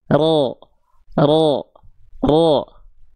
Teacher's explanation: Mulut kita enggak perlu pakai monyong-monyong. Jadi, pangkal lidah kita yang naik yang membuat karakter huruf tebal terdengar tebal. Enggak pakai monyong.